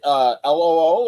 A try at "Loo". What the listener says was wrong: It's LOO, but it's pronounced Low, not Lou.